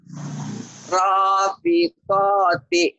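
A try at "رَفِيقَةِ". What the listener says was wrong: Pendek, ro-nya doang yang panjang. Rafiqati.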